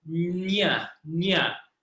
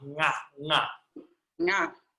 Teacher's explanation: It's not ni, na, or nya. It's nga. It's the back of the tongue.